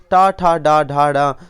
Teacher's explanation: टा वर्ग मूर्धा से बोला जाता है। ऑप्शन सही होगा सी, टा ठा डा ढा डा, ये मूर्धा से बोले जाते हैं।